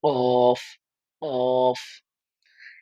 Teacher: জিবার গোড়া তার বরাবর উপরে তালুর সঙ্গে লাগিয়ে পড়তে হবে